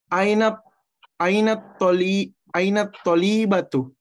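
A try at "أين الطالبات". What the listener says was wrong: Ya, panjang pendeknya yang betul ya. Panjang pendeknya yang betul.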